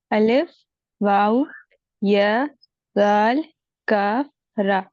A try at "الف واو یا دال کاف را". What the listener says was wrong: دیکھیے واو سنائی دیا ہمیں، واو پڑھنا ہے. واو اور را کو را تھوڑا ہیوی ساؤنڈ کے ساتھ میں.